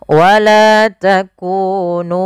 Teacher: izhar syafawi yang di mana harus dibaca dengan jelas suara mimnya dan tidak boleh ditahan wala takunu